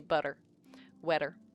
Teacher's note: I have a T in between vowels. I flap it and it becomes voiced and it's the exact same as an R in Spanish. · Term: flaps